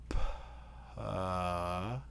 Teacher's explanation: So with p, if you slow it down, you go p. So the voice onset time is after the plosive.